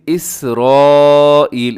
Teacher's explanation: سین کے اندر سیٹی ہوتی ہے